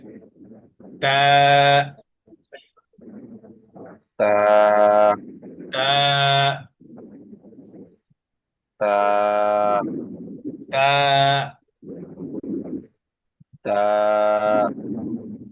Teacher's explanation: আচ্ছা, এরপরে আছে তা। জিহ্বার যে আগা, এই আগাটা লাগাবো সামনের উপরের দুই দাঁতের গোড়াতে।